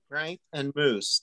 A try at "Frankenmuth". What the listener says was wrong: Not moose.